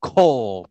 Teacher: I mean, you think it's pronounced kal, but it's pronounced kol because, again, the kamats get shortened to an O sound